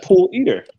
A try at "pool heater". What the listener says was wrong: No, you said eater. It's Heater.